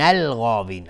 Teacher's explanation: غین از حروف استعلاء غلیظ تلفظ میشه، الف هم تابع غین غلیظ